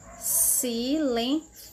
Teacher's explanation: Se eu for pronunciar na Espanha, Só o C com o I que vai ser com a língua encostando entre os dentes